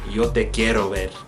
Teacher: Most other places will do it just like a regular flick of the tongue, rolling the R kind of thing.